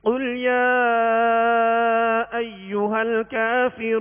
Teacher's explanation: قاف کو پر یعنی موٹا پڑھیں گے کیونکہ حروف مستعلیہ میں سے ہے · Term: موٹے قاف